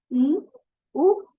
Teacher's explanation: Pero para decir I, U, no tuve necesidad, no me bajó el mentón porque son vocales cerradas.